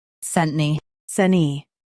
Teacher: Stress sent and soften knee.